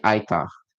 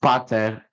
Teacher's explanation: as we can see, the P was dropped